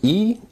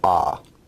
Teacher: terms of height vowels are either considered high mid or low e is an example of a high vowel and ah is an example of a low vowel